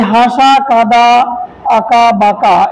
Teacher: এই শব্দগুলো উচ্চারণের সময় আমাদের নাক এবং মুখ উভয় জায়গা দিয়েই শ্বাসবায়ু নির্গত হয়, তাই এগুলোকে অনুনাসিক স্বর বলা হয়। হ্যাঁ, এইগুলোকে বলা হয় অনুনাসিক স্বর।